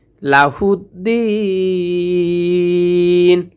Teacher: দিন এখানে যদি ওয়াকফ করি তাহলে তিন আলিফ টেনে পড়বো, কারণ মদের হরফে বামের হরফে ওয়াকফ করলে তিন আলিফ টেনে পড়তে হয়।